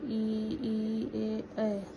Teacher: पहला अग्र स्वर जिन स्वरों के उच्चारण में जीहवा का अग्र भाग ऊपर उठता है अग्र स्वर कहलाते हैं।